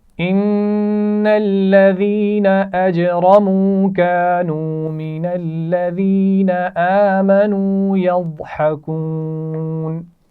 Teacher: ان الذين ان کے نون پر غنہ ہے. الذين اس میں یا مدہ ہے.